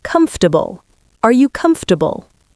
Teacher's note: Don't say the O. Don't say the R. Just comfortable.